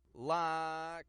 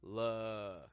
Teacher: Tongue around the center of the mouth in the back. Look. Tongue a little bit lower down in the back. Relaxed, kind of sound.